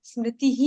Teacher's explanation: ई के बाजू में वो विसर्ग है इसलिए उसको खींचना